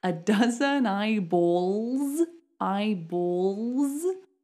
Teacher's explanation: it's a dark L because it comes before a consonant